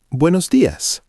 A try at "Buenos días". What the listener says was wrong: Almost perfect. Make sure you hit that S at the end. Días. Días. Buenos días.